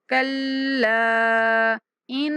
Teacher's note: کلا، لام کے اوپر 3 سیکنڈ تک لمبی مد کریں گے. کلا ان، غنہ کریں گے نون کے اوپر.